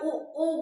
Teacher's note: जैसे आप उ कह रहे हैं तो दोनों होठों को जो है गोल बना रहे हैं, फिर जाके उ का उच्चारण हो रहा है, तो ये ओष्ठ से, इसका उच्चारण स्थान क्या होगा, ओष्ठ होगा।